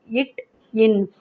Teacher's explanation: நாவின் நுனி அன்னத்தின் நுனியை பொருந்துவதால் பிறக்கும் எழுத்துக்கள்